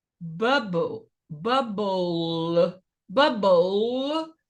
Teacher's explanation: a consoante está prendendo a vogal. Então, nesse caso, ela é curta.